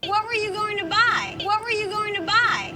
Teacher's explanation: Então ela pronunciou esse to, na verdade, como um na. Por quê? Ela, na verdade, tirou o to e emendou só o N do going.